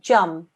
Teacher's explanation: So this letter here that I'm circling is a meme mushaddad. Because it's a meme mushaddad, when we do the join, we do a 2-second nasal sound.